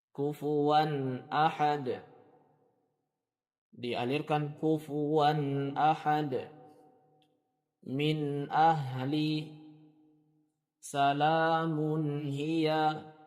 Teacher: Dikeluarkan sedikit gunnahnya, gunnah dari huruf nun tersebut, kemudian dialirkan karena sifat huruf nun adalah tawassul. Dan berhati-hati dari memantulkannya, jangan sampai dipantulkan. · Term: izhar